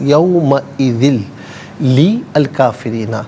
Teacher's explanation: یہاں یرملون کا قاعدہ اپلائی ہوگا، یومئذ یعنی لام کی آواز، یومئذ لی الکافرین، تو درمیان سے الف کو حذف کیا جائے گا اور لام کو لام ساکن کے ساتھ ملایا جائے گا، اور اسے یوں پڑھیں گے للکافرین